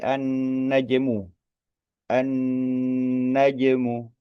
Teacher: an-najmu huruf jim, jim sukun ya, qalqalah, memantul.